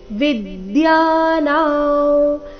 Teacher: ಅನುಸ್ವಾರದ ಉಚ್ಚಾರಣೆ ನಾಸಿಕಾ ವ ರೀತಿ.